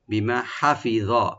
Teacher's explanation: মা একালে টানবেন ওপেন করে